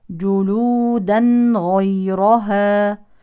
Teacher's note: تظهر نون التنوين الساكنه لان الحرف التالي غين